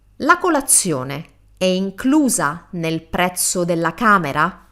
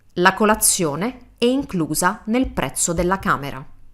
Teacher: In the first one, I changed my intonation toward the end, like kind of raising the intonation. In the second one, my voice is flat, and that means it's a statement. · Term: Italian question intonation